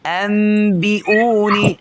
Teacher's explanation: هنقلب النون الساكنة إلى ميم مخفاة مع الغنة بمقدار حركتين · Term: الإقلاب